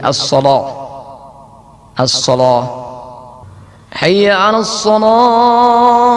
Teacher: Berikutnya membuat tafkhim lam, membuat tafkhim lam sehingga menjadi as-shalah